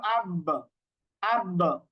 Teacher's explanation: যেমন আমরা যদি পড়ি হামজা বা জবর আব, আব, তো এই যে বায়ের উপর সুকুন দিয়ে আপনি পড়লেন, দেখেন বা কিভাবে উচ্চারণ হচ্ছে আব। তো বায়ের উপর যখনই সুকুন দিচ্ছেন তখন দেখবেন যে বায়ের উচ্চারণটা হচ্ছে 2 ঠোঁট থেকে, তার মানে বায়ের মাখরাজ হচ্ছে 2 ঠোঁট থেকে।